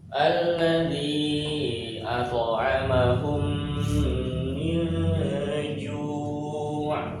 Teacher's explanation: ketika mim sukun ketemu dengan mim, dia namanya idgham mimi. Dia pakai dengung.